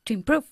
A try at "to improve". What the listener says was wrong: To improve. Más largo, ¿eh? El sonido de la vocal. To improve.